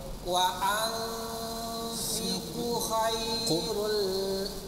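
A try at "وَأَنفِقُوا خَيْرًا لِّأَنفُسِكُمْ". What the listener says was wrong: Kunya panjang.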